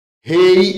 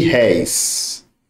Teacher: Rei, olha, fechado. É como se aqui tivesse um circunflexo. Réis é aberto. Olha, terminei aí, recebe acento.